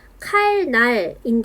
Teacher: 앞에 있는 리을이 영향을 받아서 뒤에 있는 니은이 유음화 되어 칼날로 발음이 되게 됩니다 요건 우리가 배웠던 순행적 유화에 해당하고 앞에 리을이 뒤에 니은을 영향을